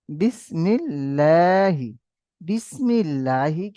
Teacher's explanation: আল্লাহ লাম মুশাদ্দাদের পূর্বে জের এসেছে তাই আল্লাহ লামকে বারিক অর্থাৎ লা করে পড়তে হবে